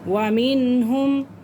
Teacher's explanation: نون ساکن کے بعد ہا آ رہا ہے، تو اس لیے ہم اس کو کیا کریں گے؟ ظاہر کر کے پڑھیں گے